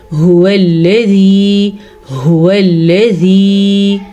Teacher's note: हा के मखरज को गले के आखिरी हिस्से से निकाला जाता है